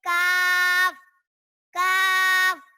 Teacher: जबान की जर और तालु के सख्त हिस्से से अदा होता है और इसे पतला पढ़ेंगे